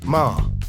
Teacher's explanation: the tone four is a falling tone which starts high and Falls sharply